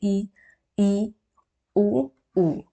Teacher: अब हम लोग संवृत का मतलब है कि ऑलमोस्ट क्या होगा कि आपका जो माउथ है वो बंद रहेगा